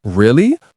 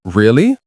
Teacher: rising tone shows interest. Really, falling tone sounds serious.